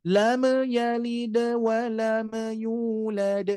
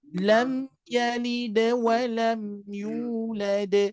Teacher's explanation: Di sini ada mim sukun juga. Jangan sampai memantulkan mim sukun. · Mim itu sama sifatnya dengan lam. Tawassuta, sedikit mengalir.